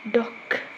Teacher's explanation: The d is one of the 6 consonants that belong to the stop sound category. The d is made by stopping the air with the tip of your tongue at the alveolar ridge.